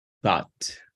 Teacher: Lengua entre los dientes y luego y luego t.